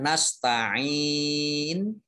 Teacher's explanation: Mad ariz lis sukun. Dibaca panjang, boleh 2 harokat, boleh 4 harokat, boleh 6 harokat.